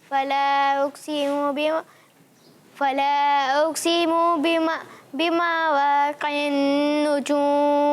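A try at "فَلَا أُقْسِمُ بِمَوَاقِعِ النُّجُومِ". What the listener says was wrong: پیارے بچے تیاری نہیں ہے آپ کی، غلطی ہو رہی ہے، قاف کو پر نہیں پڑا اور آپ کھینچ بھی رہے ہیں. فلا اقسم بمواقع النجوم.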